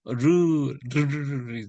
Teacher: 근데 이 혀를 갖다가 굴려버리면요, 르르르르 돼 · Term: 굴리는 소리